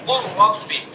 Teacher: لام کا را میں تو قر ربی ہو گیا، لام بالکل سائلنٹ ہو گیا، حذف ہو گیا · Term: ادغام